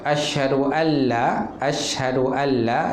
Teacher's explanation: Idgham ma gunnah tu dimasukkan dengan dengung. Kalau idgham bila gunnah dimasukkan tanpa dengung.